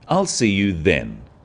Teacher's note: is now a definite commitment and an end to the arrangement notice how the stress is on the word then to confirm that the time is definite